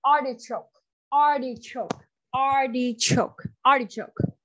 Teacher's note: This food has three syllables and the stress is on that first syllable.